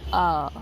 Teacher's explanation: अ जो है हमारा वो है मध्य स्वर, जो कि जीभ के मध्य भाग से निकल रहा है